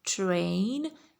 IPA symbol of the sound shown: eɪ